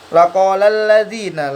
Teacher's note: Nah, cara bacanya dia itu tidak al-ta'rifnya tidak terbaca. Jadi cara bacanya langsung ke huruf lam. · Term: idgham syamsiyah